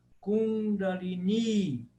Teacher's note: O primeiro i do Kundalini é breve. E o segundo é longo. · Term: i longo